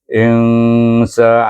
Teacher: Insa antara izah dengan idgham, bukan is, bukan in, tetapi insa, bukan bunyi nun, tak ada, dia tak cecah pada makhraj nun. Dibaca dengan ikhfa hakiki dengan dengung 2 harakat